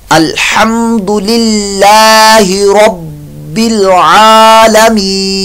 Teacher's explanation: आइन की आवाज़ हलक के दरमियान वाले हिस्से से अदा होती है , आइन की जगह आपकी आवाज़ जो मैच करेगी वो हमज़ा